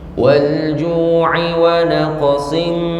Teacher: dengung tanwin ketemu dengan mim, hukumnya idgham bi gunnah, ya, masuk dengan dengung. Naqsim sin jadi mim, tidak dibaca sin lagi tapi langsung masuk huruf mimnya.